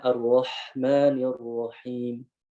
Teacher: hamsnya ini harus kuat. Ya, harus mengalir, harus mendominasi seperti itu